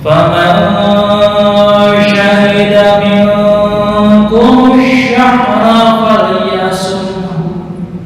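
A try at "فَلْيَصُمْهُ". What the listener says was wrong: Kepanjangan Bu ya. Falyasumhu. Falyasumhu.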